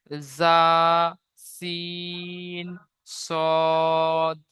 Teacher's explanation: জিভের আগা এবং সামনের উপরের এবং নিচের দুই দাঁতের আগার সাথে লাগিয়ে উচ্চারিত হয় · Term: 13 নম্বর মাখরাজ